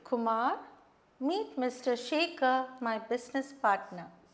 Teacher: All this falling intonation.